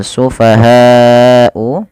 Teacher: panjangkan lafal bunyi ha sepanjang 4 harokat atau 5 harokat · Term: mad wajib muttasil